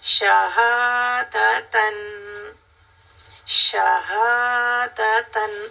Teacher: इस ह को भी क्लियर करना है ये गले के नीचे वाले पोर्शन से अदा होता है